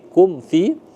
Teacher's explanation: mim mati bertemu dengan fa ya. Izhar ee syafawi. Jadi dibaca jelas ya.